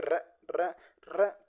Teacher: आपकी जीवा कंपन कर रही है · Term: प्रकंपित या लुड्डित व्यंजन